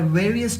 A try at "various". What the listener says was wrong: Okay, various. When you use the word various, you need to pronounce that V with a little bit more vibration. So that's a 3rd consonant sound I think you can work on.